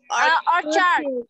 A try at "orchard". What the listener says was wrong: Orchard. Good.